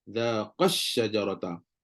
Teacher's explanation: Bila bacaan itu dibaca secara sambung, maka alif itu tak dibaca. Kita akan baca terus zaqash syajarata. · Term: alif akan gugur